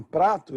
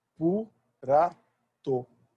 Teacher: então ele coloca uma vogal logo após a primeira consoante e cria a normalização